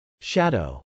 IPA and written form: ʃˈæd.oʊ (shadow)